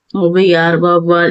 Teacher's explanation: சொற்களில் முதலில் வரும்போது தனக்குரிய இரண்டு மாத்திரை அளவிலிருந்து குறைந்து ஒன்றரை மாத்திரை அளவில் ஒழிக்கிறது